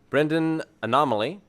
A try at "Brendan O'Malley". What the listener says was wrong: Yeah, I think you said Brendan Anomaly. There is anomaly, but that's because it's Brendan. And then O'Malley.